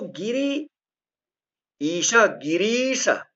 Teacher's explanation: गिरी में छोटी ई है, आगे बड़ी ई है, ह्रस्व ई और दीर्घ ई, जिसको हम सही तरीके से बोलेंगे तो गिरी ईश, गिरीश, दीर्घ ई।